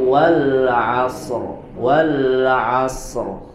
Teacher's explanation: walasr huruf rnya dibaca dengan tebal